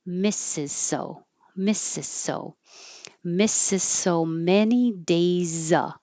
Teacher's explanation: just make it easier on yourself and kind of skip that Z.